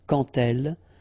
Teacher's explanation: So like that, quand elle, all right, same rule here. Remember, when you will have this D, you will phonetically pronounce it like T.